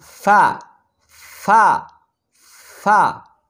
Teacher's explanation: فا اوپر کے دانتوں کے کنارے اور نچلے ہونٹوں کے تر حصے سے ادا ہوتے ہیں